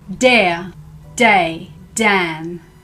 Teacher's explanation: sounds when I make the D sound like dare day Dan my tongue is on the roof of my mouth behind my teeth here still use my voice box to make this sound but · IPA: /d/